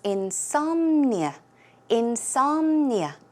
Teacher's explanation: the stress goes on some